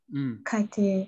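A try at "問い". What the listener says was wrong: Toite. Không phải kaite. Toite. Đứng một mình đọc là tô cự, không phải là kai đâu.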